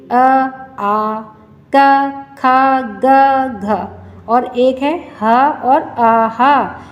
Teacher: इन सब की ध्वनि हमारे कंठ में से होती हुई आ रही है। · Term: कंठया वर्ण